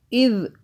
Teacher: ذال کو سافٹ پڑھنا ہے، زبان کو ہلکا سا باہر کریں پھر ادا ہوگا